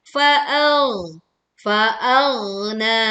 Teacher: Panjangkan selama dua harakat pada kata faagna. Na adalah dua harakat.